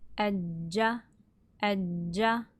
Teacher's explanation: the jeem is a voiced sound, so your vocal cords should be vibrating. Ajja, ajja, there's voice in there.